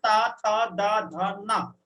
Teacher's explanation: फिर ता वर्ग जो है वो आपके दंत से बोला जाता है। जब ता बोलोगे तो आपकी जुबान है वो दांत के टच करते हुए हल्की सी बाहर निकलेगी।